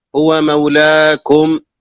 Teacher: أعد وقف على الميم الساكنة بدون غنة